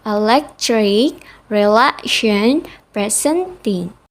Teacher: They all have 3. They have the same pattern of stressed and unstressed syllables. The second syllable is stressed. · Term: stress patterns